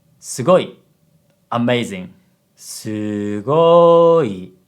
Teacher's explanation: High, low, low. An example of low, high, low is sugoi.